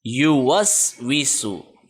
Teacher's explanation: سین سیٹی والے حروف میں آتا ہے، اوپر اور نیچے والے جو دانت ہیں ان میں تھوڑا سا فاصلہ ہوگا، زبان کہیں پہ ٹچ نہیں ہوگی